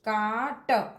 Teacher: consonant के पहले अगर आर होता है तो उस आर का उच्चारण नहीं होता है